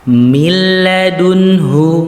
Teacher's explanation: maka nun atau tanwinnya ini masuk kepada huruf setelahnya tetapi tidak bersamaan dengan dengung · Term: idgham bila gunnah